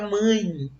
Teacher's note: Ó, quando eu pronuncio fica mãe. Ó, você percebe que esse E teve som de I, que é representado pelo Y na tabela fonética